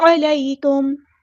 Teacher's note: میم ساکن پر یہاں پہ اظہار شفوی ہو رہا ہے